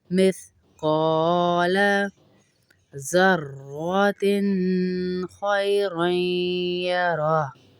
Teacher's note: फमन यअमल फमन यअमल मिथक़ाल. क़ाफ को इसलिए खींच रहे हैं, अलिफ मद्दा है